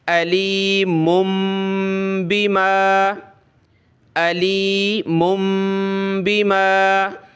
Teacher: یہ میم اس کے بعد چھوٹی میم سے پلس ہو رہی ہے، جیسے دو میم کا ساؤنڈ آ رہا ہے